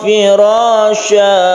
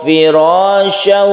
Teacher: Karena sudah diganti menjadi mad. Sya fathah kemudian dipanjangkan, itu namanya mad iwad. Jadi setiap ada fathatain yang diwaqafkan maka membacanya itu mad iwad.